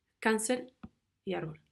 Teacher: las palabras graves con acento en la penúltima sílaba